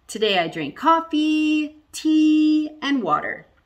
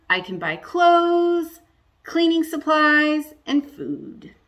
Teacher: i go up on the first two because i'm not done i go down on the end because i'm done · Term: rise rise fall